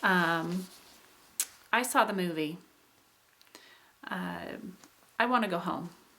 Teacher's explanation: So when we're doing, first of all, a falling contour, a falling contour is for statements, it's for commands, it's unemotional, it's basically a neutral statement. And there's just kind of a general fall of the voice. It's not particularly exciting.